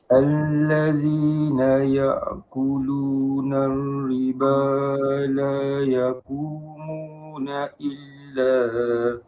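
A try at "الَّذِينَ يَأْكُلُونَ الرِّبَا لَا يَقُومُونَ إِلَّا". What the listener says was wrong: Masya-Allah. Bagus. Very good.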